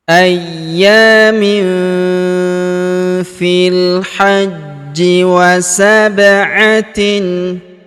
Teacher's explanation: Huruf j kita tahan dan kita tekan karena terdapat tanda tasdid di atasnya.